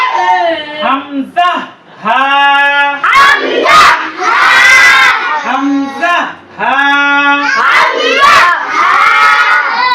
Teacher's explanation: হলকের শুরু হইতে হামজা হা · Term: এক নাম্বার মাখরাজ